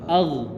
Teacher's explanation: Jangan dipantul ya, ditahan. Ag. Nah, agak dilamakan rakhwanya